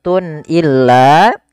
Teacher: Kemudian pada lafal Tun illa di sini ada izhar halqi yaitu suara tanwinnya harus dibaca dengan jelas karena ketemu dengan huruf hamzah dan ini kita namakan dengan izhar halqi izhar artinya jelas dari